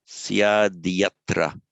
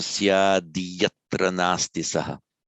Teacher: And I bet you're all bursting to ask that since I've said that the optative of asti is syat with a T, why is it that it's here written with a D? Okay, the word on its own is syat, but when it's followed by a voiced consonant, the T becomes a D.